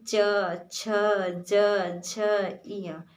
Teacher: च वर्ग का जब आप उच्चारण करेंगे तो आपकी जो जिह्वा है वो तालु को स्पर्श करेगी, यानी कि ये इसीलिए इसे तालु बोलते हैं च वर्ग को।